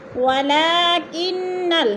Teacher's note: منی، یا ساکن سے پہلے نون کے نیچے زیر ہے تو ادھر یا مدہ ہو رہا ہے، یا مدہ کو 1 الف 2 حرکات کے برابر کھینچ کر پڑھنا ہے۔ ولیکن، نون مشدد سختی سے جما کر پڑھیں گے